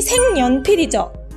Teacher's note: 니은 앞에서 기역이 이응으로 변한 현상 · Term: 비음화 현상